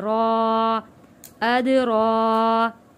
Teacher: را موٹا پڑا جائے گا اور کھڑی زبر ہے